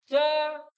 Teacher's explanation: हे व्यंजने आपल्याला जर पाहिला आपण यांच उच्चारणस्थान तर ते तालव्य गटामध्ये दिसतात